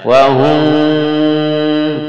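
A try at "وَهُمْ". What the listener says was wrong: bukan wahum tapi samar ke ba, jadi seolah-olah sudah akan mengucapkan ba,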